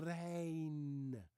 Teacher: most Dutch people use a different R. They use a rolling R.